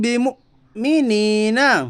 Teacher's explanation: یا ساکن سے پہلے زیر ہے اس لیے یا مدہ ہوگا یا مدہ کو ایک الف کے برابر کھینچ کر پڑھیے